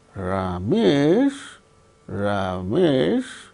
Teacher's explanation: Ramesh, fall, rise. Ramesh, then you are expressing a sense of doubt about the individual.